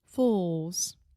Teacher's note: Fools is a very difficult word for a lot of Brazilians to pronounce because it has the final L sound, which in linguistics, if you are a linguistics nerd, we call that the dark L